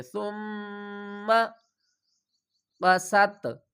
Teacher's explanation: ويريكم آياته لعلكم تعقلون۔ سا کو میم کے ساتھ ملائیں گے، میم مشدد ہے، یہاں پر غنہ کریں گے ، ثم قست، قست قلوبکم، غنہ کریں گے، آگے میم مشدد